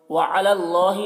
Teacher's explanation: अल्लाह को पुर पढ़ना है।